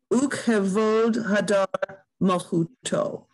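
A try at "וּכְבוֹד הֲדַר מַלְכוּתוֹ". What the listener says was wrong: That sounds different. I mean, that sounds different. When you read it, you're not doubling up on that consonant that's in there.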